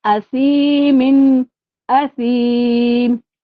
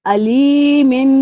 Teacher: असीमिन पे मैंने जो है इजहार किया, लेकिन अलीमिन को मैंने गुन्ना किया। अलीमिन, आगे बा आ रहा है तो मैंने यहाँ पे गुन्ना किया, इसका वक्फ होगा अलीम, खींचते हुए रोकेंगे।